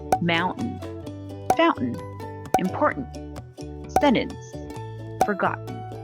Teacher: drop the t as in but and then add n without releasing the tongue from the gum ridge so the final n should be strong · The T is dropped after an N sound. Drop the T when it is followed by an N sound within a word. For example, when pronouncing button, drop the T as in but and then add N without releasing the tongue from the gum ridge.